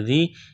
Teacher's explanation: یا ساکن سے پہلے زیر ہے، الف کے برابر کھینچنا ہے